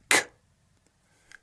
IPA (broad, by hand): c